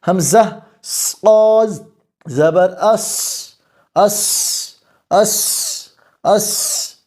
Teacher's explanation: سانس جاری ہے پستی آ گئی ہے کمزوری کی وجہ سے